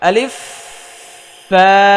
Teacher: সামনের উপরের দুই দাতের আগা নিচের ঠোটের পেটে লাগাতে হবে